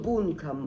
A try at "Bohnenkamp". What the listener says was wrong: Bohnenkamp. Nicht Kamm. Bohnenkamp.